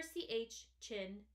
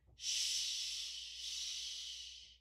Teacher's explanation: notice how with ch ch in the air comes fast and then stops with SH ship Shh the air comes out kind of fast but it keeps going long so the air for CH chin cuts up and is short